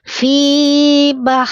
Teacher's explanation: hanya H kecil dari tengah-tengah tenggorokan, mengalir napas, mengalir suara